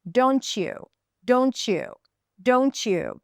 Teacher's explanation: So let's get started with the first case when there is a T sound at the end of one word and a Y sound at the beginning of the next word, and that becomes ch.